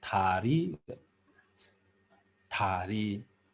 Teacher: शब्दको सुरुमा द आउँदा दलाई प्राय जसो थ उच्चारण गरिन्छ